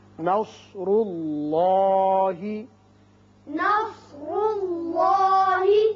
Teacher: اللہ جو ہے اس کے اندر جو لام ہے یہ پر پڑا جائے گا، اس لیے کہ پہلے پیش ہے. اس کا قاعدہ آپ پڑھ چکے ہیں کہ اگر پہلے زبر اور پیش آئے تو اس کو پر پڑھتے ہیں. · نون باریک ہوگا، صاد پر ہوگا، را بھی پر ہوگا، اس لیے کہ اس کے اوپر پیش ہے.